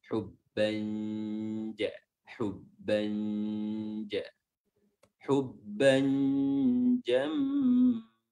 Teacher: Cara menyamarkan tanwin ini dengan meletakkan makhraj pada huruf jim, ya, meletakkan lidah pada makhraj huruf jim. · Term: ikhfa haqiqiyah